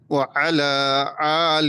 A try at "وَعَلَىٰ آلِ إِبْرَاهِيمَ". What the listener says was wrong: এখানে আরেকটা সমস্যা হচ্ছে ওয়া আলা আইন ঠিক আছে কিন্তু আলি বললে কি হয়ে যাবে আইন হয়ে যাবে এখানে এখানে কি আছে হামজা হ্যাঁ একটা হামজার উচ্চারণ আর একটা হচ্ছে আইনের উচ্চারণ ওয়া আলা এটা আইন আর এটা হচ্ছে আলি আ ই উ আলি হ্যাঁ আবার পড়েন ওয়া